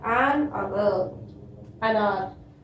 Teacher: Last one, an hour. See here, H is consonant, but here H is silent. We are not pronouncing it.